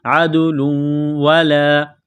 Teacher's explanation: تنوین کے بعد واو ہے، واو مشدد ہے تو تنوین پر غنہ کریں گے